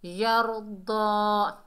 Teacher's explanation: दाद हुरूफ इस्ताला में से है, मोटा अदा होगा